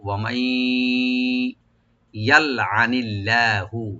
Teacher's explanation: ওয়ামাই ইয়ালআনিল্লাহু, ওয়ামাই, ওয়া ওপেন রাখবেন, মিম ওপেন রেখে নুন সাকিন এর সাথে মিলে আমরা ইদগাম উইথ গুন্না করব। ওয়ামাই ইয়ালআনিল্লাহু, ইয়াল, ইয়াটা কমেন্ট করে লামে যে সাকিন আছে এখানে আমরা কলকলা করব না, ইয়ালে এরকম না, ইয়াল, আইনটাকে ওপেন করে রাইট দিয়ে পড়বো।